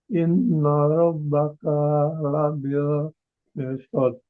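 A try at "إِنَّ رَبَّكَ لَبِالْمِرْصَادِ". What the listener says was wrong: Kaknya tinggal kaknya aja, jangan panjang.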